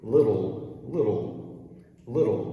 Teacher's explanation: a flap t which sounds like the portuguese r